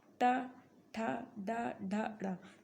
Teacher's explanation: जब आप इसे उच्चारित करेंगे तो आपकी जुबान जो है वो मुड़ जाएगी थोड़ा सा, तो इसे कहते हैं मूर्धन्य